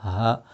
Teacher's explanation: The ha is the one that's pronounced from the bottom of the throat.